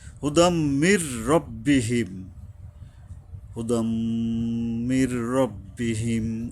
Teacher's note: হুদাম, হুদাম এখানে গুন্না করতে হবে। হুদাম মির, মিমে আইসা সরাসরি ধরবে, নুনটা সাইলেন্ট হয়ে যাবে এখানে